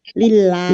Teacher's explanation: dibaca tipis karena sebelumnya kasroh